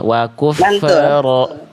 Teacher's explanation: Wakufro fa sukun nggak punya sifat qalqalah